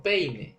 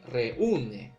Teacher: la tilde que recae en la cerrada, ese golpe de voz va a hacer que el diptongo que ocurriría se va a romper, ¿no? No va a haber diptongo, sino va a haber hiato, ¿no?